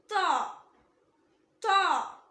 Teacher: இது same like தா. நம்ம நாக்கோட நுனி இருக்குல்ல, அது மேல் வரிசை நடுப்பற்களோட ஈரை டச் பண்ணும்போது உச்சரிக்கணும். ஆனா இது ஹெவி லெட்டர்.